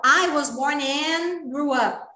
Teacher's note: Você faz que vai, mas não vai. Faz que vai falar o D, mas não fala.